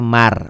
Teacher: ya tuman Manun mati ketemu ro ini Man jadi bacanya Mar masuk ke ro r-nya dua aja cukup dua nggak ditahan nggak ada dengungnya maroa ini Idgham Bighunnah atau rumusnya setiap huruf mati bertemu huruf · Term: idgham bilagunnah